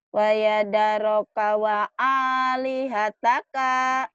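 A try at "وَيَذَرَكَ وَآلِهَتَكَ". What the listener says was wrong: K-nya pendek. Wa yadaraka alihataka. K-nya pendek.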